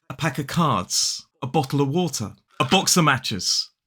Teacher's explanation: when the word spelled OF is followed by a consonant sound, we can drop the V